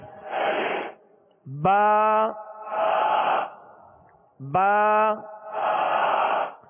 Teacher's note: با کا جو مخرج ہے دونوں ہونٹوں کے تر حصے سے یہ ادا ہوتا ہے